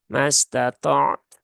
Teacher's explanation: Padahal ainnya tidak ada kolkolah. Maka ainnya jangan dipantulkan ya